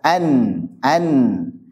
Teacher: ujung lidah ketemu gusi gigi atas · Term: izhar